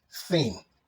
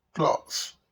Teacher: a voiceless sound, and you can hear it at the beginning of the word thin and at the end of the word cloth